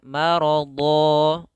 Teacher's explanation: Huruf dotnya tebal. Dha ini huruf isti'la serta huruf idbaq, yaitu huruf-huruf yang dia langit-langitnya melekat serta huruf pangkal lidahnya harus terangkat.